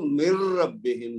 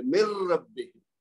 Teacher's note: اسی طرح را کی مثال دیکھ لیں، من ربہم، من ربہم نہیں پڑھیں گے، من علیحدہ ہے، ربہم علیحدہ، لیکن جب ملا کے پڑھیں گے تو من ربہم، نون کی آواز بیچ میں سے غائب ہو جائے گی، غنہ کیے بغیر نون کی آواز کو را میں ملا دیں گے